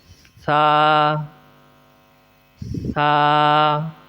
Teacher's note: زبان کے اوپر والے سرے اور اوپر والے دانتوں کے اندرونی کنارے سے ادا ہوگا